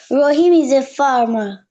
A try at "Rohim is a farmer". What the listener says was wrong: ইজে না, ইজা, ইজা বললাম না, ইজার এই একসাথে হবে ইজা।